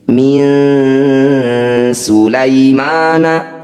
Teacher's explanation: bertemu Sin nun sukun bertemu Sin disebut bacaan Ikhfa cara bacanya bunyi nun sukun dengungkan dua harakat ketika dengung lisan kita sudah siap membunyikan huruf Sin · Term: ikhfa awsat